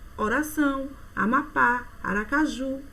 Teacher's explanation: oxítona a sílaba tônica é a última